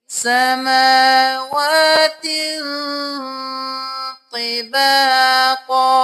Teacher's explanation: سین زبر سا، میم کھڑی زبر ما، واو کھڑی زبر وا، سماوات، تا 2 زیر تین، سماوات۔ تنوین ہے تو ہم یہاں پہ ناک میں آواز لے کے جائیں گے، دیر لگائیں گے